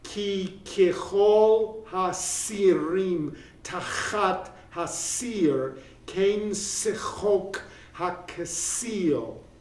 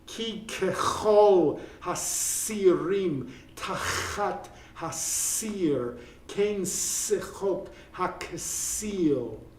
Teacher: So onomatopoeia is going on, crackling with repeated K sounds, sibilants, and I vowels pronounced E